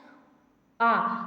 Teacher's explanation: विभ्रत स्वर उसे कहते हैं जिसके उच्चारण करने में हमारा मुंह क्या होता है? पूरा खुला होता है, पूरा खुलता है।